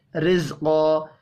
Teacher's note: را کے نیچے زیر ہے، یہاں پر را کو باریک پڑھنا ہے. قاف حروف مستعلیہ ہے، پر پڑھا جائے گا.